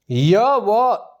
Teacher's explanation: इनका उच्चारण स्वर तथा व्यंजन के मध्य होता है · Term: अर्ध स्वर